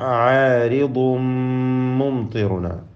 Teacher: തൻവീനിന് ശേഷമുള്ള മീമിൽ പൂർണ്ണമായും ലയിപ്പിക്കുക